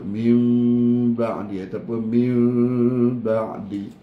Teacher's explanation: Kita tak dengung tutup mulut. Kita dengung renggang ataupun letak bibir lembut-lembut. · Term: dengung ikhfa